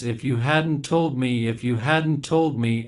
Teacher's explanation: we say the first part in one breath as one word we don't pause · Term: thought groups